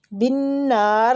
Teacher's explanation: نون جو ہے نا یہ تشدید والا ہے تو اس پہ غنہ بھی ہوگا اور کھینچیں گے بھی الف مد کی وجہ سے، را باریک ہے کسرہ کی وجہ سے